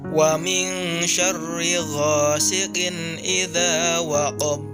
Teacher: hurufba di akhir ayat tersebut disukunkan dan dibaca memantul dengan berat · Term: qolqolah kubro, qalqalah kubra